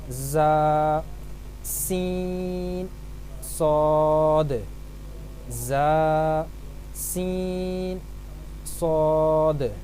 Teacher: حروف صفیریہ سیٹی کی طرح تیز آواز میں پڑھے جاتے ہیں